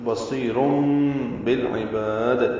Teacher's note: ان اللہ بصیر میں صاد پر ہے، سی یا مدہ ہے، را بھی پر ہے. تنوین کے بعد با آنے کی وجہ سے انقلاب ہو رہا ہے، یعنی بدل دیا جا رہا ہے رن کو رم میں